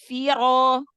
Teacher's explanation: Angkat pangkal lidahnya tebalkan naik lempar suaranya ke atas